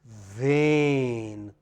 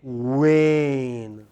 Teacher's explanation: So, in one case, in the case of V, your lower lip come close to the upper teeth, but in the case of W, you round your lips like you are going to whistle.